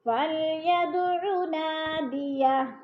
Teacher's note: نا کے اوپر حروف مدہ دو حرکات کے برابر کھینچ کر پڑھنا ہے